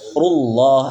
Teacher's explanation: Ru dibaca tebal karena huruf harokatnya dhamma. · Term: Ru tebal